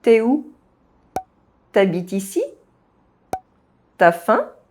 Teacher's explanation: The U sound of the subject pronoun tu is very often dropped. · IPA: [y]